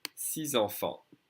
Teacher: usually I don't say the X, but because it's followed by a vowel, I'm going to connect the X with the E with a Z sound.